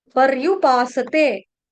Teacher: यहां पर गलती से परयुपासते स आधा बोला जाता है स आधा नहीं बोलना स पूर्ण और परयु र आधा नहीं है र आपको पहले बताया रफार